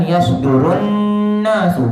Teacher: Lam ya sebutannya tidak dibaca. Diandaikan digabungkan dengan nun. Lam ni huruf nombor 1 tu, huruf nombor 1 gabungkan dengan huruf nun nombor 2. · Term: idgham